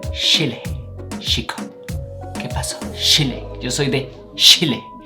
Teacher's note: and we start with the ch which i mean it's chile they don't pronounce it cha like we do in the rest of the world they pronounce like an english s-h